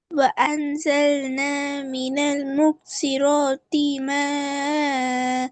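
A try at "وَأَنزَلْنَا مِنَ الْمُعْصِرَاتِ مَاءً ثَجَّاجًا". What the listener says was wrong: பிழை பிழை. இடையில மூச்சு போகக்கூடாது. பிழை பிழை. வ அ வ அன் வ وأ وأنزلنا.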